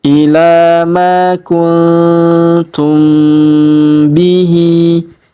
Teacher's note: huruf mim sukun bertemu bi, ba ataupun bi, maka kita dengungkan dan kita tahan ya 2-3 harokat